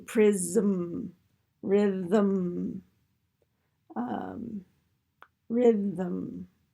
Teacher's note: So our nasal can be syllabics, as can our L's, and arguably our R's as well.